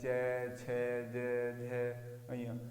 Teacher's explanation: चे वाला वर्ग तालु से बोल रहे हैं, तालवे से निकलती है